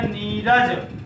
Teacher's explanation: विसर्ग से पहले कोई ह्रस्व बाद में रा, तो ह्रस्व दीर्घ हो जाएगा और विसर्ग गायब हो जाएगा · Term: विसर्ग का लोप